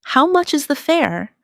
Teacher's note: The stress is on how much and fair. This makes it clear and easy to understand.